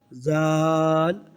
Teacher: زال کو نرمی سے ادا کریں گے، زال کو ادا کرتے ہوئے سیٹی کی طرح آواز نہیں آئے گی۔